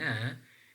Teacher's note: alular because the tongue is touching that alular region and then that is nasal because the air is coming out through our nostrils